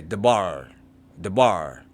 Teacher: The stress or force of pronunciation falls on the last syllable bar. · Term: stressing the last syllable